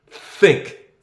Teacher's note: TH makes that sound where you put your teeth, your tongue between your two sets of teeth.